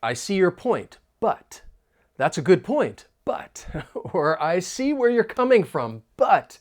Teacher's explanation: notice how I'm emphasizing the word but